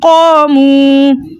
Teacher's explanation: واو مدہ کو 2 حرکت کی مقدار کھینچ کر پڑھتے ہیں